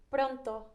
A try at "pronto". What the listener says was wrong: I like that R.